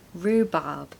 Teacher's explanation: no R sound in the second syllable